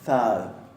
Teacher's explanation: Y después tenemos thad. Fíjense que ahí tenemos dos interdentales, una sonora y otra sorda.